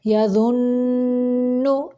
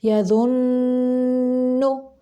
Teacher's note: ادھر نون غنہ ہو رہا ہے، یعنی آواز کو ناک کے بانسے سے نکالنا ہے، یعنی ناک کی جڑ سے نکالنا ہے۔